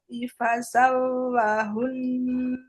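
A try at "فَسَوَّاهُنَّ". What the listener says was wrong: fasawwa wnya panjang itu Bu.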